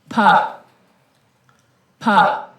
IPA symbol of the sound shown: p